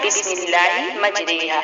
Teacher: مجریحہ، کیا پڑھنا ہے، بسم اللہ مجریحہ، اور یہاں را باریک، یہاں پر را باریک کرنا ہے اور امالہ کرنا ہے، یعنی جھکانا ہے